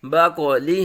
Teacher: قاف پر مستعلیہ ساکن حروف قلقلہ میں سے خوب قلقلہ ظاہر ہوگا